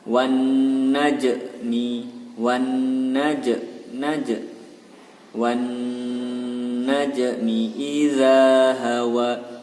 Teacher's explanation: Wan najmi, wan najmi. Dan huruf jimnya berharokat sukun maka dibaca qalqalah sughra